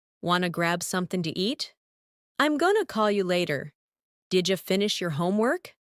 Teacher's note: want to becomes wanna, going to becomes gonna, and did you becomes didja